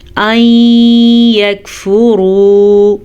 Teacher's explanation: فا کو لمبا نہیں کریں گے جبکہ یہاں پہ واو مدہ ہے. اسے ہم کھینچ کے پڑھیں گے